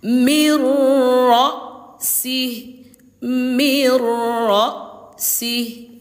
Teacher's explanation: Jadi, cara bacanya dileburkan tanpa berdengung.